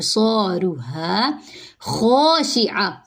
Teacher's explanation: خو کو پر پڑھیں گے اور ایک الف کے برابر لمبا کریں گے کیونکہ آگے الف آ رہا ہے، ہا اور خو ان دونوں